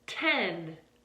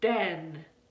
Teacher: with that t sound, it's voiceless, and with that d sound, it's voiced.